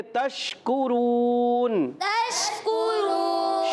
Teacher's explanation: شین میں تفشی ہوتی ہے, منہ میں آواز پھیلتی ہے, مگر پھیلنے میں آواز یہ نہ ہو کہ آواز لوٹ جائے, یعنی شین ہل جائے. · آخر میں کاف کو باریک رکھیں گے. کاف زبان کی جڑ تعلق کے سخت حصے سے ادا ہوتا ہے. را واو پہ شروع, واو مدہ ہے, را کو پر بھی رکھنا ہے, اور وقف کرنے میں ہو جائے گا مدے.